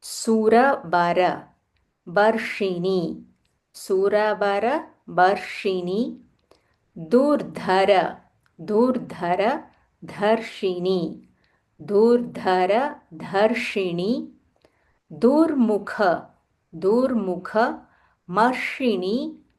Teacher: So in this shloka there are so many murdanya shas. So, you'll have to keep rolling your tongue multiple times.